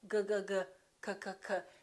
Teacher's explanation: G and K have the same point of articulation. It happens back here.